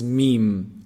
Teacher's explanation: meme is pronounced from the lips when you bring both lips together